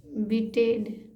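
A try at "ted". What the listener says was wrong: बीटेड नहीं, टेड पढ़िए खाली।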